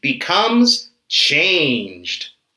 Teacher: so in the past listen becomes listened finally we have change the final sound is j j is a voiced sound